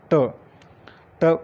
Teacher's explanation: ट उच्चारलं की जिभेचा वरच्या टाळूला स्पर्श होतो